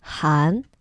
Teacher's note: Han, the second tone, just like what, goes up.